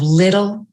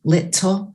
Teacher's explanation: in the middle of little it's a tongue flap